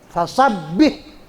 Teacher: Fasabbih, ba-nya tasdid. Ba yang bertasdid itu seolah-olah huruf double, maka bacanya agak ditekan karena dia double. Fasabbih, ba sama ba-nya double.